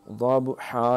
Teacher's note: یہ با کے اوپر قلقلہ ہوگا